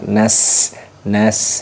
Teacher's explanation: kalau pakai Sin ini mirip desis dengan desis ular